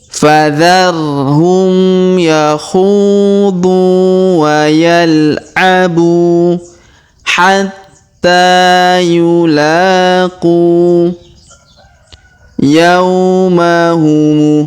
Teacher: huruf qu kita panjangkan 2 harokat karena terdapat waw sukun di depannya, sedangkan alifnya tidak dibaca atau tidak dianggap ya.